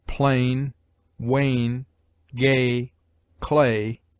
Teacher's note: A forms a diphthong only with I or Y, and U or W. AI or AY, as in plain, wane, gay, clay, has only the sound of the long and slender a